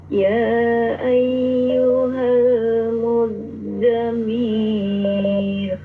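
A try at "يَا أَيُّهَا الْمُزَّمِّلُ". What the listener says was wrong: Jangan dipanjangin. Ya ayyuhal mudzammil.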